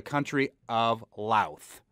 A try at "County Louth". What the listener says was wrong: county, not country.